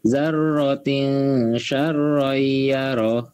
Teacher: jangan dibaca zarotin tapi samar mendengung